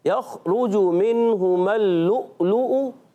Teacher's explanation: یخرج کی جیم کی پیش تھوڑی سی لمبی ہو گئی, اس کو لمبا نہیں کرنا